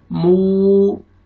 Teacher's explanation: वाव मद्दा है, वाव जज़म से पहले पेश, मीम को आपने खींचना है, होंठ को आपने, लिप्स को अपने राउंड में लेके जाना है ताकि वाव अच्छी तरह अदा हो